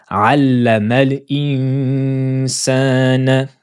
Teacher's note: la lettre noun on touchera pas son point de prononciation comme on avait dit on abaisse la langue et on prépare la lettre suivante